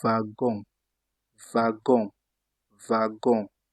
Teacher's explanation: You see that the W became V.